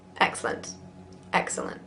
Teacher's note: Careful, you Britons, that you don't truncate it into 2 syllables.